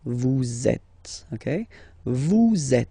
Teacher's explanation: vous is ending with S, and then you tend to make a little link between them. So vous êtes, z, it goes like that.